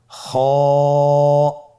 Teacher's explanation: খ হরফটির মাখরাজ হলো কন্ঠনালীর শেষ ভাগ হতে উচ্চারণ করতে হয়।